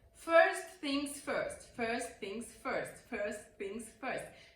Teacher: things first first things first first things first it sounds that you're not pronouncing the T in first and you are blending it with the th first things first in this way actually it feels more smooth